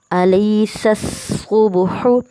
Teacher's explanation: اب جیسے مثال دے رہے ہیں یہاں پہ الیس الصبح، اب سین اور صاد، اب سین جو ہے اسے سیٹی میں لانا ہے، صاد جو ہے اسے موٹا پڑھنا ہے۔ ملتے جلتے الفاظ ہیں لیکن دونوں کا صاف خیال رکھنا ہے۔